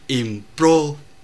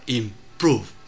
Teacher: chữ o ở đây viết là chữ o nhưng đọc là u